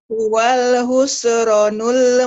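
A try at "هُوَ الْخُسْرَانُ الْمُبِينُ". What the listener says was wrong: Panjang rohnya. Huwal khusranul. Huwal khusranul mubin.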